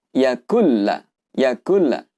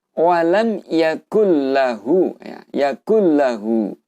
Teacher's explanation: namun panjang harokatnya itu tidak didengungkan, yaitu artinya cukup dengan 1 harokat saja. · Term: idgham bila gunah